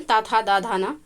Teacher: दांत और जीभ के स्पर्श से बोले जाने वाले वर्ण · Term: दंत व्यंजन